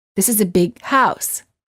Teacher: you would hold the G sound of the word big and you would say this is a big house word groups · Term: final stop